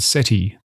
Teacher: The final vowel is short and unstressed.